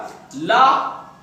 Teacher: ला में बोलने पर हमारी जुबान जहाँ टच होती है उसके पीछे से आवाज आती है, इसलिए उसे हम पार्श्व व्यंजन कहते हैं, है ना, पार्श्व व्यंजन कहते हैं।